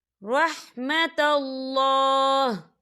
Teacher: وقف کی صورت میں ہاں ساکن ہو جائے گا